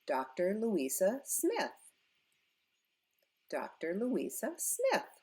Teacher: We go up on Smith.